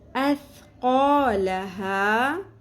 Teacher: کچھ لوگ قوف کو پر کرتے کرتے ثا کو بھی پر کر دیتے ہیں، ثا کو باریک رکھنا ہے